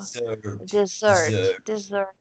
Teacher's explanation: Sílaba tônica é a segunda, né? A última.